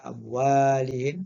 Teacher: panjangkan wa tu sebab ada alif